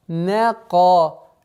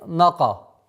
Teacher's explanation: Нужно сперва произнести полностью, четко, мягко звук нун не, потом уходить на твердый звук ка. Нека, а не нака, что является ошибкой.